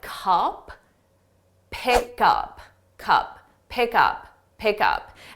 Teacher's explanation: So what a native speaker will do is they'll take the last sound on pick and they'll put that on up. So it will sound like cup, pick up, cup, pick up, pick up.